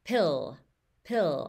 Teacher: i'm going to move my tongue up quickly and that's how you kind of fade away that vowel at the end